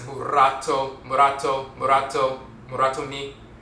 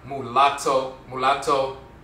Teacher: The rolling R, ra, just one tap, murato, instead of murato, but murato, the tongue taps the roof of the mouth once. So there's an interchange between the rolling R and the L